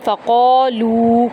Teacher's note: قاف کو ہم 1 الف کے برابر لمبا کریں گے اور پر پڑھیں گے